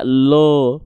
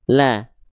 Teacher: Karena dia hurufnya dibaca dengan keadaan yang tebal. Berarti huruf lam di sini dia dibaca dengan keadaan tipis karena vokalnya la, tidak lo, tapi la.